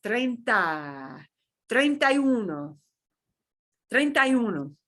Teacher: all those vowels are going to run together and in reality it's going to almost sound like some of those vowels are dropping and they're not but they're all going to run together and